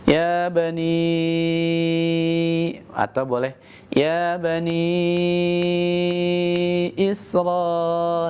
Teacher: ya bani, itu mad jaiz munfasil. Ini panjangnya 5 harakat.